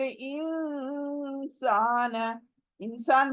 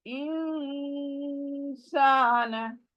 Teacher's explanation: नून नाक में चली जाएगी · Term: इफा